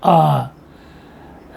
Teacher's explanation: ये वे स्वर हैं जिनके उच्चारण में मुख पूरा खुला रहता है, खुल जाता है, जैसे आ। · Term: विवृत स्वर